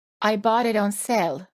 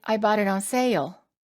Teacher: the long A vowel sounds even longer because we add an extra sound before the L.